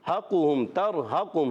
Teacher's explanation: ہا ادا ہوگا حلق کے نیچے والے حصے سے